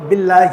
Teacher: باللہ کو باریک پڑھیں گے, موٹا کر کے نہیں پڑھیں گے اللہ کے لام کو